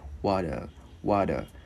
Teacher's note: Chữ T biến thành chữ D tiếng Việt nhẹ